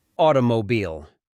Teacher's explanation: Entre la [i] y la [ɫ] se inserta una vocal extra. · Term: pre-L breaking